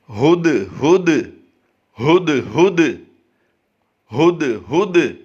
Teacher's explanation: یعنی ہا کی ادائیگی حلق کے نیچے والے حصے سے کریں گے، اور دوسرے لفظ میں ہم یہاں پر دیکھ رہے ہیں کہ بلو کلر، گہرا بلو کلر ہے، تو اس میں ہم کیا کریں گے، اس میں ہم جھٹکا دے کر اسے پڑھیں گے۔